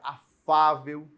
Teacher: a sílaba tônica é a penúltima é o fá e ela termina em L é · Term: paroxítona